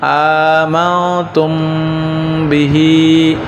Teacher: মিম সাকিনের বামে বা আসিলে মিম সাকিনকে নাকের ভিতর লুকাইয়া গুন্নাহ করিয়া পড়িতে হয় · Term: ইকফায়ে সাফবি